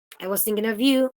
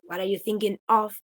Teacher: of would be with a schwa because it is no longer stressed